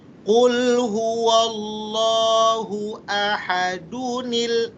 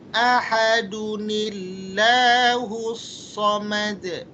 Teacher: huruf yang berharakat tanwin sesudahnya ada huruf alif lam trif maka tanwin boleh dibaca dengan Nun wasal